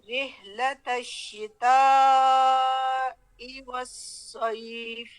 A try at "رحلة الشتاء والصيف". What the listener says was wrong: سنتی بس اب حرف الحاء میں تھوڑا سا اور زور لگائیں ہا کی طرف نہیں جائے ہا رحلة الشتاء والصيف